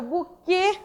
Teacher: o E, né, do buquê, passou a ter uma pronúncia fechada